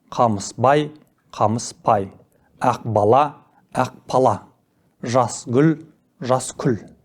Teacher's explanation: Қатаң дауыссыздардың әуенімен кейінгі б, г, ғ, ж дыбыстары айтылуда қатаңдап п, к, қ, ш дыбыстарына айналады. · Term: прогрессивті ассимиляция